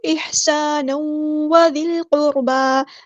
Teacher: ہم نے mix up کرنی ہے آواز کو، احسانا وذی القربا، زال کو ہم نے لام کے ساتھ ملا دینا ہے ، حمزۃ الوصل مع ڈراپ ہو جائے گا، لام یہاں پہ